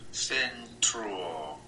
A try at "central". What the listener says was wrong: Now that one I heard a little bit of a T sound.